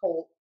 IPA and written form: koʊlt (COLT)